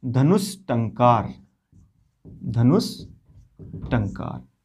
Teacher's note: अब देख रहे हो आप विसर्ग के बाद क्या आ रहा है, ट। विसर्ग के बाद ट या ठ आने पर हमको मूर्धन्य स करना है